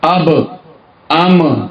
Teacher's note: پدې با او میم کې به شونډې جوختيږي او واو کې دې کې به شونډې استعماليږي خو فرجه وبږي